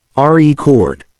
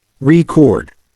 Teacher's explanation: a noun or a verb depending on where the stress Falls when it's a noun the stress is on the first syllable · when it's a verb the stress is on the second syllable